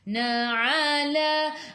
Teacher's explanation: Ai'u daripada kerongkong bukan daripada hidung.